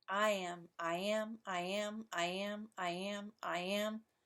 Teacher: The stress falls on the same syllable as an iambic poem, the second syllable.